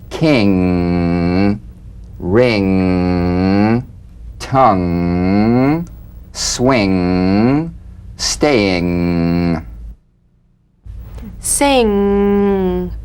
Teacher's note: the soft palate back of the tongue to the soft palate vibration coming through the nose feel a twangy nasal resonance · the ng is a voiced tongue-backed soft palate nasal consonant so sing with the back of the tongue in contact with